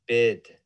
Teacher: b and a high front vowel